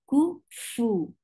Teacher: For fa, you will give humps. Humps is a flow of breath.